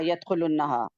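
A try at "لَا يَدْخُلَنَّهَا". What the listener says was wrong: خلنہ لام کے اوپر زبر ہے.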